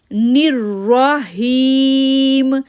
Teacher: نون کو را کے ساتھ جوڑیں گے، تشدید ہونے کی وجہ سے 1 سیکنڈ کے لیے رکے، پھر را کے اوپر زبر ہونے کی وجہ سے پر آواز کیا